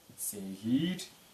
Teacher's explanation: Это передняя щелевая сегирь, так как рядом передние гласные.